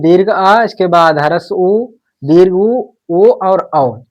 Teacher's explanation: पश्च भाग यानी जीभ का सबसे पीछे वाला हिस्सा जो है वो प्रयोग में आता है। उन्हें हम पश्च स्वर कहते हैं।